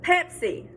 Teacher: i put the stress in the pep